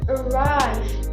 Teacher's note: It is pronounced arrive. It consists of two consonant sounds, namely voiced alveolar approximant and voiced labiodental fricative, and three vowel sounds, namely mid-central vowel and diphthong, low front unrounded vowel plus tense high front unrounded vowel.